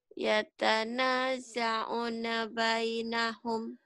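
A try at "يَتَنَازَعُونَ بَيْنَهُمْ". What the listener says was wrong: O-nya panjang.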